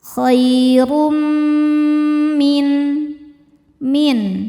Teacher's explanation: Berikutnya ada hukum idgham bi gunnah, karena ada tanwin dhammah menghadapi huruf mim. Cara bacanya tanwin dimasukkan ke mim disertai dengungan.